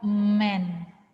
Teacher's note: kita mengeluarkan suara melalui hidung. Jadi dia kayak mendengung, misalnya men. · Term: nasal